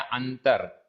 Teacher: जहां भी अनुस्वार है, अनुस्वार का अक्सर आधे म के रूप में उच्चारण होता है, लेकिन जैसे मैंने आपको बताया अंतर, अंतर में आधे न के रूप में उच्चारण आ रहा है